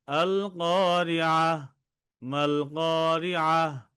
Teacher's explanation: গোলতা ওয়াকফ অবস্থায় গোল হা উচ্চারণ করা হয় আর ওয়াকফ না করে যদি মিলিয়ে পড়া হয় তাহলে গোলতাকে তা